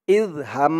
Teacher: উচ্চারণ করবেন ইজ হা দিয়ে মিম ধরবে হা মিম জবর হাম এখানে ওয়াজিব গুন্না হবে হরকতের পরে মিমের উপরে তাসদিদ